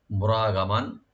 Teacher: রা এখানে একটু ডিপ করে একালিপ টানবেন · মিমের উপর যে তানবিন আছে এখানে আমরা একফা করবো, লাইট গুণ হবে এখানে